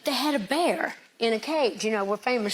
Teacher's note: I was told to listen for a sh sound on the s's.